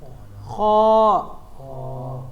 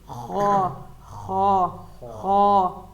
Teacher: جہاں سے ہم کھانا نگلتے ہیں، جو نگلنے والی جگہ ہے نا، اس جگہ سے خا ادا ہوتا ہے خا. اب دیکھیں، اور خا جب ادا کریں گے ہلکی سی خارش ہو رہی ہے گلے پہ، وہیں پہ خا خا خا، تو یہ خا ہو گیا.